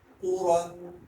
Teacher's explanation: تو پیش ہو، واو تو زبر ون، تو ون، تو ون. قاف پیش ہو، را دو زبر رن، قورن. دونوں حروف کو موٹا پڑھا جائے گا